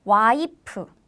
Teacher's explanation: in korean we don't have f sound so we replace the f pronunciation with p sound